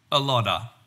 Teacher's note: And What did you hear? I heard the T sound change to an unaspirated D, and then of got squeezed down to the schwa sound uh, and that linked up to lod to become lodda.